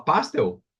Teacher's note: pastel eu falo pastel eu colocaria o acento gráfico no e então ela é uma oxítona e não uma paroxítona